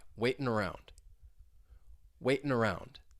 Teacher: I can link that waitin', that n sound with the vowel sound in around